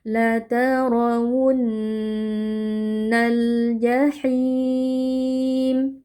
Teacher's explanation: nun tasdid kita baca dengan dengung panjang · Nah, ini alif lam qamariah. Karena alif lam bertemu dengan jim yang merupakan huruf qamariah. Alif lam dibaca dengan jelas.